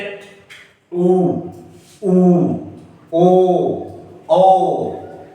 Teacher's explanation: जिन स्वरों के उच्चारण में होठ वृत्तमुखी या गोलाकार होते हैं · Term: वृत्तमुखी स्वर